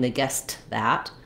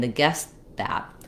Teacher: will say the T but in Connected speech we link and when we link to another consonant sound that t sometimes gets unreleased and you won't hear it